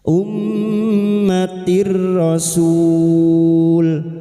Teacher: Sebuah nun sukun atau tanwin yang bertemu dengan huruf lam atau ro, pertemuan nun sukun atau tanwin dengan salah satu dari keduanya, termasuk ro, masuk tanpa berdengung. Ia memasuki huruf berikutnya, yaitu ro, tanpa berdengung. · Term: idgham bila ghunnah, idgham bila guna